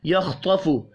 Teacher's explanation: خا اور طا دونوں حروف مستعلیہ ہیں، پر پڑھے جائیں گے.